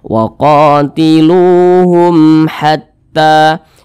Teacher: Izhar syafawi dibaca jelas, tidak berdengung, jadi dibaca pendek saja.